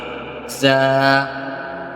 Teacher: زبان کے سرے کو سامنے کے نیچے والے 2 دانتوں کے ساتھ اور کچھ حصہ اوپر کے آگے والے 2 دانتوں کے ساتھ لگائیں گے